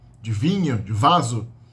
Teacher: A diferença é que vá, o som da letra V, de vinho, de vaso, tem um pouco de vibração das cordas vocais junto na produção. Então elas são um pouco mais sonoras, na verdade.